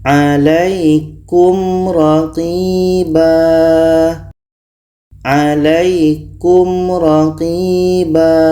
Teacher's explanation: di sini ada mim mati bertemu ro izhar syafawi. Dua-duanya dibaca jelas dan tidak dengung.